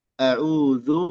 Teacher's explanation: dzu di sini huruf zal jangan jadi dho, zu misalkan, atau zai, zu, ya.